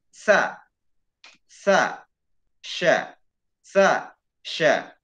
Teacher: Ini sama-sama di tengah-tengah lidah, ya. Huruf sa dan sya berada di tengah-tengah lidah, antara tengah-tengah lidah dan langit-langit, ya. Antara tengah-tengah lidah dan langit-langit.